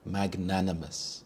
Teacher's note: The stress is on the second syllable nan, magnanimous.